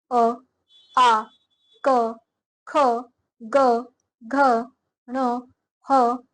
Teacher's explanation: जिन वर्णों का उच्चारण कंठ यानी कि गले से होता है उन्हें कंठय वर्ण कहते हैं। अ, आ, क, ख, ग, घ, ण, ह और विसर्ग अंघ कंठई वर्ण है, यानी कि जिस वर्णों को के उच्चारण में बोलते समय हम गले से होता है, हमारे गले से आवाज आती है, उसको कंठई वर्ण कहते हैं।